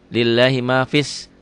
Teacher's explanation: alif lamnya alif lam samsiah, alif lam tidak dibaca.